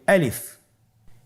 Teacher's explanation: আলিফ হরফটি মাখরাজ হলো আপনার মুখের শূন্যস্থান থেকে, গলা এবং মুখের শূন্যস্থান হতে আলিফ হরফটি উচ্চারিত হয়